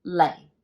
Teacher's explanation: tone now the fourth tone is going to be your uh low falling it starts here and it goes straight down it's going to be the lowest tone in cantonese and it is pronounced as light are just falling down lay